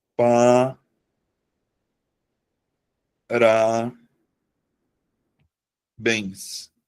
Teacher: eu vou acentuar porque a sílaba tônica tá na última sílaba da palavra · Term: oxítona